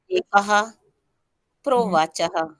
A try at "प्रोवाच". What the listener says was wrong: विसर्ग नहीं है।